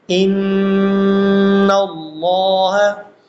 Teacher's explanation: تو طرف لسان اور دانتوں کے مسوڑے، یہاں سے نون پڑھا جاتا ہے، نون کو مکمل آپ نے مخرج میں ادا کرنا ہے، اور پھر نون مشدد ہے، نون مشدد جیسے ان اللہ، زبان کو اس کے مخرج پہ لگانا ہے جو نون کا مخرج ہے، طرف لسان اور دانتوں کے مسوڑے